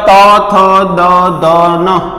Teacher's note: जीभ क्यां आड़े छे दात ने, एटले आ कयो थई गयो दंत्य